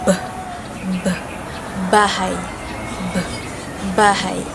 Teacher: Pangalawa ay ang titik B. Panlabi. Ang paraan ng artikulasyon nito ay pasara na may tunog.